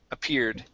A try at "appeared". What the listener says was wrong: Give me the D there. Appeared.